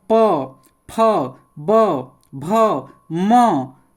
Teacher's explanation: ओष्ठ माने ओठ। देखिए प दोनों ओठ सट जाता है